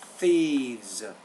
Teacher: you're not getting the tongue exactly between your teeth with the word thieves.